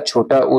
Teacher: इसमें जो है हमारी होठ जो होती है मुंह होता है। होठ जो होती है गोल हो जाती हैं उ के उच्चारण में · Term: वृत्त मुखी स्वर